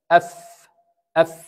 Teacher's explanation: The lower lips also participating with the فاء. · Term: الفاء